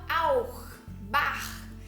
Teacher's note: após as letras A, O e U, ele vai ter um som, um pigarro aqui na garganta